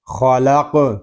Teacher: قاف ساکن ہے، اس میں بھی کلکلہ خوب ظاہر کریں گے